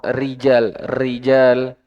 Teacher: ada banyak getaran, banyak pengulangan. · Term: getaran tikrar